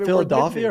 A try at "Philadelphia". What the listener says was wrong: You're saying Dolphia like Dolph Lundgren, and most people pronounce it Delphia like the Oracle of Delphi.